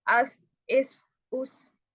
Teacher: ऊपर से मैं पढ़ रही हूँ, ठीक है, लेकिन मेरी विसल आ रही है, मेरी जबान ऊपर वाले दो दांतों के किनारे पे तो लग ही नहीं रही, इसलिए आपको एयर की साउंड कम और आपको विसल की साउंड ज्यादा आ रही है। तो सा में बिल्कुल बहुत नरमी से आपने इसको अदा करना है, आगे किनारे पे जबान रखनी है, अस, इस, उस।